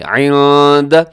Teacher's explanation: جی عند اللہ، یہاں لفظ اللہ کو اوپر پڑھیے گا، اس سے پہلے دال کے اوپر زبر ہے، اور اسی طرح عند یہاں پہ نون ساکن ہے، اس کے بعد دال ہے، تو یہاں پہ کیا کریں گے؟ اخفا بھی کریں گے